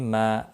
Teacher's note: ما الف مدہ ہے، ایک الف کے برابر کھینچ کر پڑھیں گے۔